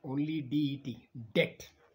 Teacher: b is not pronounced here only det debt